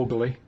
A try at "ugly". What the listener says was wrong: He gets an extra syllable in the word ugly. Ugly. Ugly.